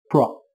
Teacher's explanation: Các bạn lưu ý từ này có 2 âm tiết, trọng âm rơi vào âm tiết thứ hai nhé. Từ này đồng thời có chứa phụ âm liên tiếp p và r. Các bạn đọc nối với nhau nhé. Pro, Các bạn cũng đừng quên từ này kết thúc bằng âm T là một phụ âm vô thanh.